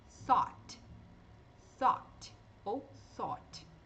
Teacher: vai ser ó ou Ó você escolhe se quer fazer mais aberta mais fechado depende do sotaque também